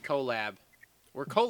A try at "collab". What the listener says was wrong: Why did you put so much emphasis on the O and the L?